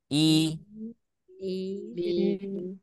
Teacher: lidah tengah itu naik rahangnya turun